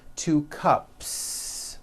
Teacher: It ends with an unvoiced p-p cup. Well, then if you add an s to the word cup to make it plural, the s you add also remains unvoiced.